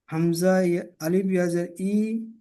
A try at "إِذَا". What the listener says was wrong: ইয়াজের নেই, হামজাজের ই।